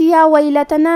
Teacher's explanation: یا پہ کھڑا زبر ہے تو یہ مد الف ہے، ہمیں اپنی آواز دو مد کے برابر لمبی کرنا ہے. لام پہ اور تا پہ اور نون پہ تینوں پہ زبر ہے تو ہم یہ تینوں زبر کو برابر سا پڑھیں گے.